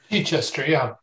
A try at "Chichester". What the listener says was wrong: No, Chichester, it, as in it, right? Chichester. Chichester. No emphasis on the Chester, Chichester.